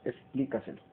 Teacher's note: Esta palabra se tilda en pli y es una palabra sobresdrújula porque lleva el acento en la trasantepenúltima sílaba